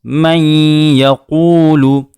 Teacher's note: نون کو یا میں ادغام کیا گیا ہے اور نون کے بعد جب یا آئے تو وہاں غنہ بھی کیا جاتا ہے، آواز کو گنگنایا بھی جاتا ہے.